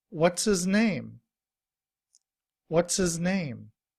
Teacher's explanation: in reduced form, we don't pronounce the H. We just say is. When that's combined with what's, we say, what's his name?